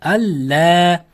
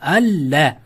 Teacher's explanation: sukunlik nun harfidan so'ng lam harfi kelib qolsa, sukunlik nun harfini lamga o'zgartirib g'unnasiz o'qiymiz. G'unnasiz idg'om.